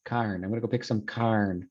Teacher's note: The or sound, like corn, is pronounced carn.